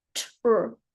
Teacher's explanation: if you're hearing ch because of our Australian accent, what's actually happening is a T and an R.